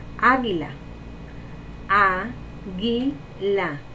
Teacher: La sílaba tónica sería a y sería una palabra esdrújula.